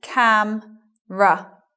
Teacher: having a look at the word camera after the M elision of schwa not saying it in other words so it becomes cam ruff not camera next · Elision of schwa following M and R.